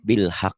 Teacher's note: Ini suara hanya ngedesah ya. Hak kecil.